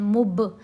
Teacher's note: عنہا مبعدون، با کے اوپر قلقلہ کرنا ہے، دال کو لمبا کرنا ہے. قلقلہ یعنی با کو ہلانا ہے